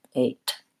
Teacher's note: the thing to watch out for is making sure you do a diphthong on the American a